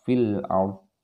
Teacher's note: fil ard jelas, ya, kasrahnya tidak dibaca kalau dia mau berhenti